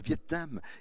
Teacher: l'accent qui ne supporte pas que deux consonnes se suivent au beau milieu d'un mot